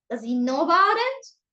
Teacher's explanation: So I start in a normal voice, low one, and then I raise it at the end. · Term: raising